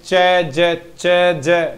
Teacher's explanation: पैलेटो alveolar लगभग बीच में से आएंगे